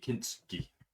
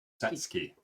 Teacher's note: the U is a unvoiced vowel. It's almost like a space.